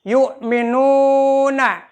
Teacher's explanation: Yu'minuna, karena di atas wawu ada hamzah. Yu'minuna, nu-nya dipanjangkan, doma wawu mati, yaitu mad tabi'i 2 harkat.